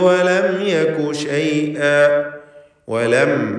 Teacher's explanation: സാക്കിനത്തായ മീം ഇൽഹാർ ഷഫവി നൽകി മണിക്കാതെ വെളിവാക്കുക